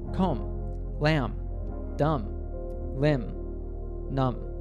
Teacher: words in English that end in mb are usually pronounced with a silent B